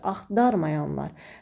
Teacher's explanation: Deməli, sözdə həm kök fərqli tələffüz olundu, həm vurğu ikinci hecaya düşdü, axtarmayanlar. Həm A saiti I-ya keçdi, qapalı saitimiz oldu, həm də şəkilçi fərqli tələffüz olundu.